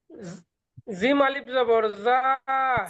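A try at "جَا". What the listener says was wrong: জিম না, জিম যেমন 3 আলিফ পর্যন্ত টান দিয়েছিলেন 1 নম্বর তাকতি থেকে, সেরকম এখানেও টান দিতে হবে প্রত্যেকটা অক্ষর বলার সময়।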